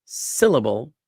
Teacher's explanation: sit is the emphasized syllable in syllable. And the second two are de-emphasized.